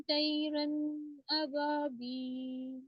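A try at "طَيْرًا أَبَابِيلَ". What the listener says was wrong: तोयरन, तो भी बहुत मोटा ऊंचा हर्फ है, तोयरन। तोयरन अब यहाँ पे भी नून के मखरज पे आपने रुकना नहीं है, स्टे नहीं करवाना। तोयरन अबाबील।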